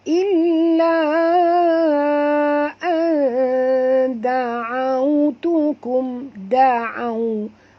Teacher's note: da di sini lembut sebutannya, bukan tebal, ya. Illa da'autukum, da'au.